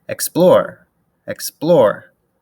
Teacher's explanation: the stress in explore is on the plore part of explore